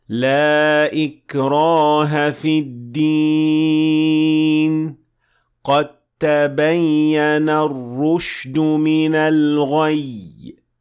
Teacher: the dal and the ta are fused together in this ayah. and we don't pronounce the dal at all